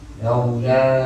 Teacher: Laula ni mad jaiz, kita baca 4 harakat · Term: mad jaiz munfasil